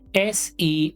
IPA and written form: siːz (seize)